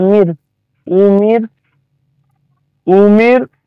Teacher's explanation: র এটা আপনার বারিক হবে কারণ পারমানেন্ট জের আছে